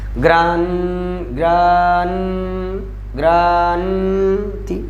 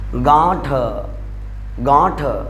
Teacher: अनुस्वार का उच्चारण तो स्वर के बाद में होता है, अनुस्वार का उच्चारण स्वर के बाद में होता है, जबकि चंद्र बिंदु का उच्चारण स्वर के साथ में होता है